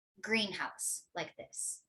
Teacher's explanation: in compound nouns, it's actually the modifier that receives the stress, whereas this part, the head, receives less stress.